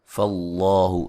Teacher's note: نون تنوین کا باریک اخفا ہے، ٹھیک ہے؟ فقی غن فاللہ لفظ اللہ کو موٹا ادا کریں گے، اس سے پہلے حرف پر زبر ہے